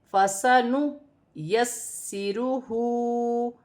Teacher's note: یہاں پر سین مشدد ہے، اسے جماؤں کے ساتھ پڑھا جائے گا